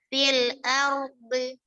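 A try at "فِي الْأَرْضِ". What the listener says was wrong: Lebih tebal, fil ardi. Di. Fil ardi.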